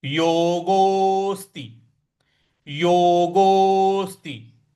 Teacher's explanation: जो योगो का गो है उसके आगे यस लगा हुआ है, तो इसको दीर्घ खींचना है